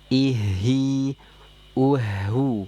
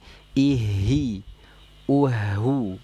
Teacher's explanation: jangan vokal e kalau kasrah sempurna vokalnya I